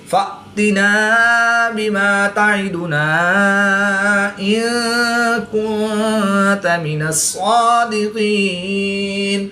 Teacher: نون ساکن کے بعد تا بھی حروف اخفا میں سے ہے تو یہاں پر بھی اخفا ہوگا یعنی غنہ زمانے کر کے پڑھیں گے۔ صاد اور قاف حروف مستعلیہ میں سے ہے تو ان کو پر یعنی موٹا کر کے پڑھیں گے۔ · الف مدہ کے بعد حمزہ دوسرے کلمے میں ہے تو یہاں پر مد منفصل ہوگی، 2 سے 3 الف تک کھینچ کر پڑھیں گے۔ نون ساکن کے بعد کاف حروف اخفا میں سے ہے تو یہاں پر اخفا ہوگا یعنی غنہ زمانے کر کے پڑھیں گے۔